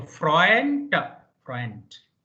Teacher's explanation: Whenever D is coming at the end, it should be T. So Freund, Freund.